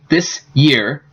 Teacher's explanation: So when you have these, you're going to have some change because it's hard to say these sounds followed by Y. So S and Y often ends up sounding like sh. So if you say this year, it would sound this year. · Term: coalescent assimilation